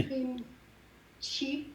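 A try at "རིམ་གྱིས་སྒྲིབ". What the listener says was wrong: Ah, c'est pas vraiment chi quand même. C'est Rimki Dip. Tu peux le dire un peu chi, parce que les Kampai prononcent comme ça, mais c'est quand même Rimki Dip.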